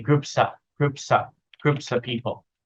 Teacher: we stress the P part and the group part. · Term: chunking